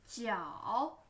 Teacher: Take care of the third tone. First falling, then rising.